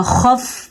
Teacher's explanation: خف ہم نے نہیں کیا کیونکہ حروف کلکلہ میں فا شامل نہیں ہے